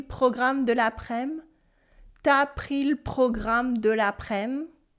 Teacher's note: We cut the U in tu before the vowel, and we also get rid of the E sound in le, and we use the colloquial word après-midi for afternoon.